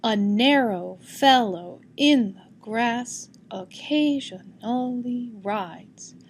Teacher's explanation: Weak strong, weak strong, weak strong, weak strong. This poem has a consistent meter, that is, the pattern of weak strong is consistent. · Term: iambic